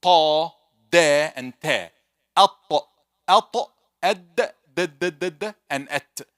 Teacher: from the tip of the tongue, touching the root of the teeth with the gum, you may say, that will be ta, which is the orange one.